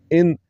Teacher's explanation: نون ساکن کے بعد ءزہ ہے جو کہ حروف حلقی میں سے ہے تو اس نون کو پڑھتے ہوئے بغیر غنہ کے پڑھیں گے